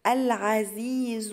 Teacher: هنطق اللام ليه؟ لأن هي لام قمرية